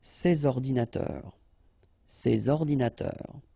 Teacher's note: And in that case, I took the plural form, so these here, and then ordinateur, computers. So you should make the liaison between S and O.